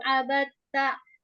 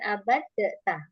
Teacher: Untuk abatta ini teman-teman yang belajar tahsin, dal ketemu ta itu nggak usah dikol-kolkan abad ta, bukan, karena dal sama ta itu idgham mutajanisain, jadi diidghamkan ke huruf ta